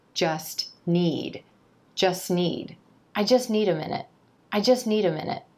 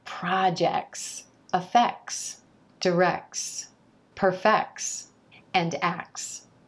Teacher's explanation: that T sound is likely going to disappear you don't need to worry about getting that T in there